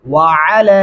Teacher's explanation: کیا ہوتا ہے وعلی وعلی نہیں کرنا یہ غلط ہوگا وعلی عین گلے سے ادا کریں گے اور لام کو لمبا کریں گے